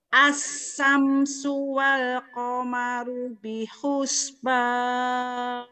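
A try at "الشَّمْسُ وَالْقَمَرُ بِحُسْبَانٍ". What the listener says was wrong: mulutnya dibuka bukan itu monyong dibuka lebar ya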